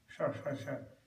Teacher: Like that, so there's a combination, it's like a DR, you're ready like a DR. So this is a sh with an R sound, and the tongue drum like sh, like that.